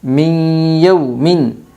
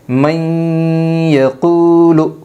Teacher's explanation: نون ساکن کے بعد یومن کے 4 حرفوں میں سے یا آئی ہے، اس لیے نون ساکن کو غنہ کے ساتھ ملا کر پڑھے گی۔ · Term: ادغام مع الغنہ